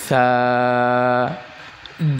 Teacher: উচ্চারণের সময় জিহুবার আগা সামনের উপরের দুই দাঁতের আগার সাথে লাগবে